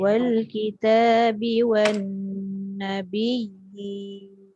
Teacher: Nun sabdu tu dengung dia 2 harakat kena cukup.